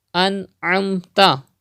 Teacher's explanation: Ain is a halkiya letter coming after noon sakin. So izhar will be done, gunna will not be done.